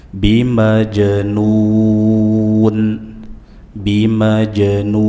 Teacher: nu mad arid lis sukun 4 harakat dibaca dengan memonyongkan bibir, dan akhiri dengan huruf nun, nunnya jelas dibuka, tidak dimonyongkan.